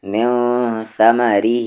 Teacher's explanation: نون ساکن کے بعد ثا ہے اور ثا حروف اخفا ہے، تو یہاں پر من نہیں من ثمرہ، اور دھیان سے اس میں ثا کو، ما کو اور ری کو تینوں کو نہیں کھینچیں گے.